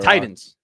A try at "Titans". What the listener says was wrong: It sounds like there's a D when you say it. Titans.